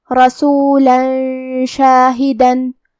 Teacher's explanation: شین حروف الاخفاء میں سے ہے، اور اخفاء کا معنی ہے چھپا دینا، تو ہم یہ تنوین کو چھپاتے ہوئے اور غنہ کے ساتھ یہ حکم کو ادا کریں گے